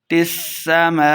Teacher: پڑھیں گے، وفتحت السماء، میم کے اوپر مد ہے، دیکھیں آپ میم کے اوپر مد ہے تو ہم اسے لمبا کر کے پڑھیں گے